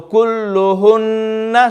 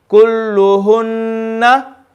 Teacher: No, because lam is not, ghunnah does not fall in lam shadda in this case, okay? So the lam will just be double, but the noon will be read with ghunnah because it's a noon shadda